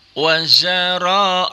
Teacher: rohnya dibaca tebal juga tabkhim karena rohnya baris di atas